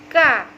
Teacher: Dan kemudian dia punya sifat istifal. Istifalah di sini yaitu ujung lidahnya tidak melekat ke langit · kalau ketika membunyikan huruf kaf yaitu pangkal lidahnya turun